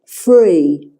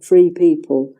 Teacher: The number 3, THREE, is often pronounced free.